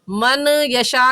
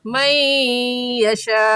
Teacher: नून साकिन पर गुना करने के साथ-साथ इदगाम भी होगा